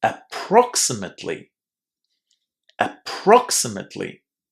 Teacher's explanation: the stress here falls on the second syllable